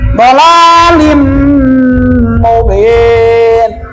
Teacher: Mim itu huruf id- idgham. Yang tadinya lin dimasukkan n-nya kepada m, jadi lim. · Yang tadinya lin dimasukkan n-nya kepada m, jadi lim, ditukarkan atau bacaannya. Tadinya lin kan, sebab ke depannya ada mim, jadi lim bacanya.